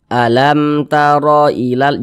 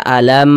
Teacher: bukan huruf mim maka hukumnya izhar syafawi karena dia izhar maka dibaca jelas tidak berdengung jadi baca pendek saja